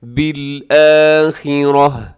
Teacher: جب وقف کرتے ہیں گول تا پہ تو ہم کیا کرتے ہیں، اس کو ہا کے ساتھ چینج کر دیتے ہیں